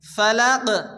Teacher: কফ সাকিন, কফ কলকলা অক্ষর হালকা ধাক্কা দিয়ে পড়তে হবে।